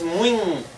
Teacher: O I é nasal. Na palavra muito. No entanto, a gente não marca essa nasalização na escrita.